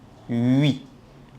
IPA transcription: ɥi